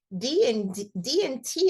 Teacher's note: d and T are actually produced in the same place the only thing that's different is one sound is voiced meaning your vocal cords are vibrating so letter D is made in the same place as T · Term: tongue tip sound